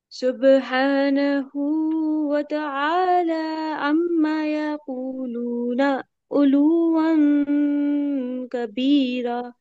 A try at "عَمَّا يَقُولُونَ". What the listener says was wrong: हाँ عما में अलिफ को लंबा करेंगे عما يقولون।